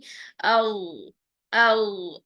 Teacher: ज़ुबान की जो जड़ है ऊपर की जानिब उठ रही है, तालू की जानिब, चिपकानी नहीं है तालू को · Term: ग़ैन